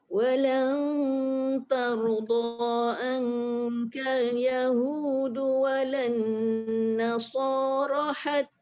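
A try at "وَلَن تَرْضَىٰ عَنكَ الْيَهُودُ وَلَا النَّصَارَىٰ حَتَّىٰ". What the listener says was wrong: Nasoro. Ro panjang. Satu lagi kan Bonda, dekat an tu kan, nun dengan kaf tu dah betul dah, angkal. Tapi dia punya ain tu dia tak jadi ain, dia jadi hamzah. Jadi kalau baca walan tarda dia jadi hamzah permulaan tu. Baru ditekan pada ain.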